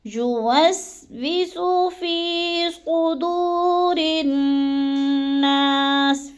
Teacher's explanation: زبر زیر پیش حرکت کو ہم نے بالکل لمبا نہیں کرنا، یوسوسو یعنی جلدی جلدی ادا کرنا ہے · یوسوسو یعنی جلدی جلدی ادا کرنا ہے، یوسوسو فی صدور الناس، فی کو تھوڑا سا ہم نے لمبا کرنا ہے، یا مدہ ہے